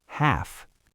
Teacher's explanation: Half ends in the unvoiced F sound, short vowel.